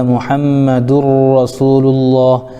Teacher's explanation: تو محمد الرسول اللہ میں دال کے اوپر آپ دیکھ رہے ہیں 2 پیش ہے، اور 2 پیش کو تنوین کہتے ہیں۔ تنوین کے بعد حروف یرملون میں سے را آ گیا تو یہاں پر ادغام ہو گیا، یعنی را کے اوپر تشدید پیدا ہو گیا تو ادغام ہو گیا